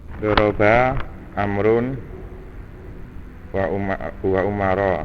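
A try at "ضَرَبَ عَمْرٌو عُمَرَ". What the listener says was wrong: Lah, wow, bukan wa itu ya. Itu amrunnya, wawunya ikut amr, tidak dibaca.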